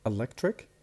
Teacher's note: So we have electric, the stress in the middle.